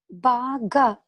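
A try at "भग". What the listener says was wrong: Not baga. Bhaga. Bhaga. It is not ba. It is bha. Short vowel. Bhaga. Bhaga. Not baga. When you say ba, you are saying you are stretching the letter a. You are making it dirgha, long. Is it a long vowel there? Then bhaga.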